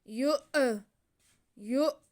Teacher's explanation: فقلیلا ما، فقلیلا ما، آگے یا پہ پیش اور حمزہ پہ ساکن، تو حمزہ کو ہم چٹکا لگا کے پڑھیں گے، یا کو حمزہ کے ساتھ ملائیں گے